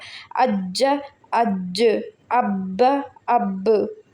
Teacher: کلکلا کا بھی ہے تو اس پہ کلکلا بہت خوب واضح کر کے کلکلا ہوگا، ادھر وقف میں کلکلا والے حروفوں پہ جب مشدد آ جائے تو اس پہ خوب واضح کر کے کریں گے کلکلا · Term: اسٹرانگ کلکلا